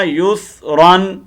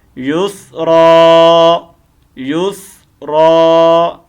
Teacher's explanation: 2 زبر کی تنوین کو ہم کیا کریں گے، گرائیں گے نہیں بلکہ الف مدہ سے بدلیں گے